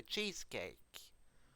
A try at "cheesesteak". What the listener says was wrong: Cheesesteak, you mean? You said cheesecake. No, it's cheesesteak, not cheesecake.